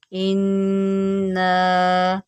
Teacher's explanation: نون مشدد ہے، یہاں پر غنہ کریں